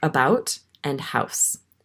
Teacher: Most Canada natives have what's called Canadian raising, where the diphthong in how is raised before S, T, and other voiceless consonants